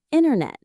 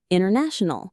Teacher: Dropping the T after an N is a classic American shortcut.